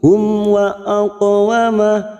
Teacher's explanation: qaf sukun qalqalah sugra karena mati asli di tengah kalimat, jangan lupa dipantulkan